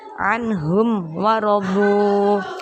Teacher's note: Ada mim sukun bertemu huruf wawu. Mim sukunnya dibaca jelas. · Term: idhar syafawi